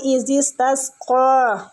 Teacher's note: قاف کو پر پڑھیں گے، مستعلیہ ہے اور کھینچیں گے بھی